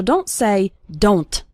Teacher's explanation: at the end of the word don't we don't really pronounce the T strongly so don't say don't okay it's more of a stop at